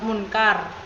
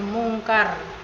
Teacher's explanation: Munkar kan mengalami perubahan bunyi N menjadi eng juga akibat pengaruh konsonan K sehingga menjadi mungkar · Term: asimilasi